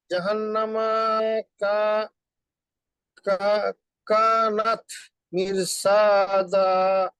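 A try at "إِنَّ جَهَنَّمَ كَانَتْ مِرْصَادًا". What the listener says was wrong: হুম স একটু মোটা হবে, হ্যাঁ আমাদের সদটা হচ্ছে ওই মুস্তালিয়া মোটা হরফ, তো মির স, আমরা যদি মির সা বলি তাহলে সিন হয়ে যায়।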